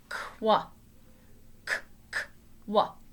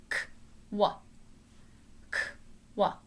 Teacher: The C goes to your neck, and then the W goes to your mouth.